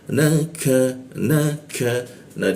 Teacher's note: nun bertasjid atau berwarna pink maka kita tahan dua ketukan di tasidnya